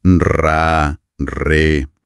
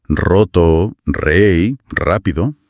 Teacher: Un buen truco es empezar sin vocales, solo intentar hacer ese R, ese carraspeo vibrante y suave en la garganta. Y cuando localizas esa sensación, le añades una vocal, ra, re. · El aire que viene de los pulmones es el que tiene que hacer vibrar la parte de atrás del paladar, casi la campanilla. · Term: r gutural, sonido gutural